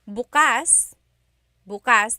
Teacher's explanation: If you say bukas, bukas, the emphasis is on the second syllable.